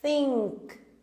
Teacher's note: Percebam que a língua da teacher tá passando entre os dentes.